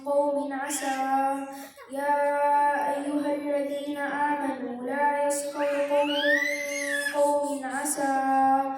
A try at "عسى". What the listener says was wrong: It's not asa, asa, just asa because we're not connecting.